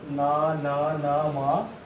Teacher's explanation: पांचों वर्गों के अंतिम वर्ण न, न, न, म अपने अपने वर्गीय उच्चारण स्थानों के साथ साथ नासिका की सहायता से बोले जाते हैं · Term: अनुनासिक वर्ण